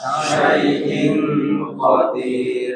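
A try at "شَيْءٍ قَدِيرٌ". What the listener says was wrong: Jangan syai'in, in nunnya masih hidup, tapi masukkan ke tenggorokan, pangkal lidah. Syai'in qadir.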